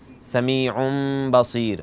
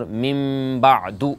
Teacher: جی جیسے سمیع بصیر، اور ساتھ یہ بھی کہیں کہ غنہ بھی کرتے ہیں، نون کو میم سے بدل کے وہاں غنہ کرتے ہیں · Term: اقلاب